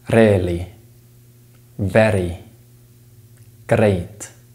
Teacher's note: the r sound may be replaced with a voice tap in some accents